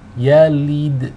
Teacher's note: Again, the lam here takes a kasra. We want the e sound, not the ih sound. So if you read lam yalid, if you're reading lid, that is incorrect.